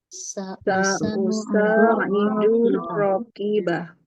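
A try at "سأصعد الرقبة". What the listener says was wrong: Ya, yang panjang ronya.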